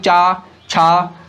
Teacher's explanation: अब आप देखेंगे कि तालव्य जो तालु जीभ से ऊपर होता है, अब जब इसका उच्चारण कर रहे हैं चा छा, तो आपकी जीभ जो है वो तालु को ऊपर वाले हिस्से वो टकरा रही है, छू रही है, प्रत्यक्ष रूप से या अप्रत्यक्ष रूप से। आपकी जिह्वा जो वाग यंत्र है वो तालु को स्पर्श कर रही है।